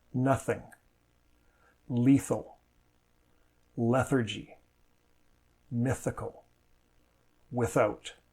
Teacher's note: The tip of the tongue is placed between the teeth or just behind the teeth - native speakers do this differently, so there is no one right way, as long as you're making the right sound. The sound comes from the friction of the air escaping between the tongue and the teeth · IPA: θ